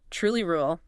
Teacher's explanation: You feel how quickly you have to pull your tongue back for the R in truly, then flatten the tip right up front for the L in rural. That super quick switch.